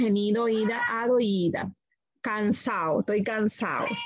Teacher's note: pérdida de la d en palabras terminadas